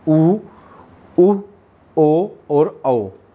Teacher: जब होठ गोल होते हैं तो वो बोलते हैं व्रतमुखी, और जब होठ गोल नहीं होते तो उसे बोलते हैं अव्रतमुखी। अर्थात व्रतमुखी स्वर वे होते हैं जब होठ गोल होते हैं।